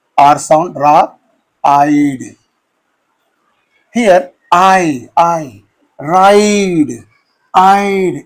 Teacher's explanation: it's a complex vowel sound that begins okay with one vowel sound and glides into another vowel sound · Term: diphthong